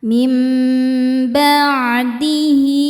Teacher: Dan huruf setelahnya bukan hamzah, bukan a ataupun i ataupun u. Maka ha damirnya dipanjangkan dua harakat. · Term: mad silah qosirah, mad silah qasirah